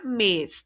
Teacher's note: o acento circunflexo que dá um som fechado como na palavra mês